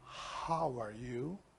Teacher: the sound of the H is very soft. Like a breath, like a sigh.